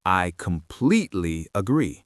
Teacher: The P sound in completely needs to have a burst of air behind it and the E vowel sound needs to be stretched.